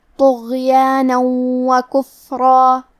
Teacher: کلمت طغیانن میں طا ہے اور طا حروف تفخیم میں سے ہے، تو ہمیں طا کو بھاری آواز میں اور منہ پھلا کے پڑھنا ہے۔ آخری میں نون کے اوپر تنوین زبر ہے، پھر حرف الواو ہے کلمت وکفرا، واو حروف الادغام بغنہ میں سے ہے، تو ہم یہ حکم کو غنہ اور تشدید کے ساتھ ادا کریں گے، طغیانا وکفرا۔